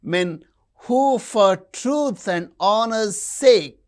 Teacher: Men, truth, honor, sake. These are stressed.